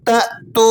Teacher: واو ساکنہ اس سے پہلے حرف پر پیش ہے تو یہ واو مدہ ہے، اس لیے ہم اسے دو حرکتوں جتنا کھینچ رہے ہیں